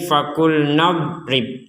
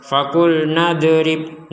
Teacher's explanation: Tidak ada pantulan sama sekali untuk huruf do karena huruf d tidak termasuk huruf-huruf yang dipantulkan jadi sekali lagi jangan memantulkan huruf d yang sukun ini tidak